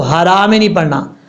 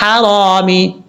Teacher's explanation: ہا بریک پڑھنی ہے، بھاری ساؤنڈ کے ساتھ ہا پڑھیں گے تو ترجمہ بدل جائے گا